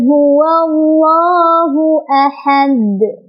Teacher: karena dal sukun itu adalah huruf qalqalah, maka dia cara bacanya adalah dipantulkan dan pantulannya besar ya. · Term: qalqalah kubra